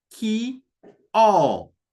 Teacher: it's going to be a lengthened O, or we are going to pronounce it as if there are two O.